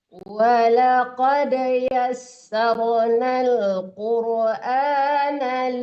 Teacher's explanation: walaqad dipantulkan dal mati itu ya